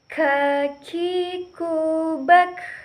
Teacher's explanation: Huruf K menyentuhkan pangkal lisan dengan langit-langit bagian belakang.